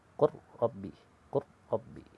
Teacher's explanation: Sama bunyinya, langsung bunyikan antara lam dan ro, masukkan huruf, idghamkan ke huruf ro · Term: idgham mutajanisain